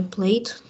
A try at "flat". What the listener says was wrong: Flate? It's not flate. It's flat.